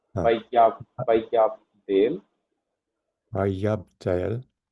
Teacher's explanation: Yod should be stressed because it is carrying Dagesh forte.